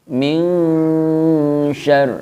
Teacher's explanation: Maksudnya, ya, nunnya di sini teman-teman, ketika kita membaca nun, ya, min di sini mulut kita sudah siap melafadzkan dalam makhraj huruf shin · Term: ikhfa hakiki